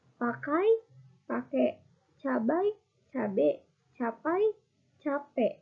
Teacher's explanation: Beberapa kosakata dalam bahasa gaul menyederhanakan bunyi diftong dari kata bahasa baku menjadi bunyi monoftong. Monoftongisasi diftong AI menjadi E.